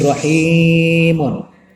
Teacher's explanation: Hi-nya ini dipanjangkan dengan iya karena sebelumnya adalah berharokat kasroh atau jer. Maka di sini 2 harokat atau 2 ketukan. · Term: mad asli